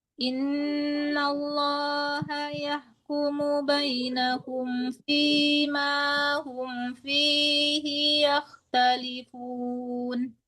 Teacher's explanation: Humnya itu jangan tertahan gitu soalnya enggak dengung di situ ya.